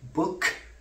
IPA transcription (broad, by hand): bʊk